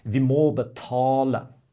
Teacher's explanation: Le o et le a, c'est beaucoup plus long que les autres voyelles dans la phrase